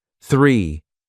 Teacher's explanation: The number three starts with that special English sound with the tongue between the teeth.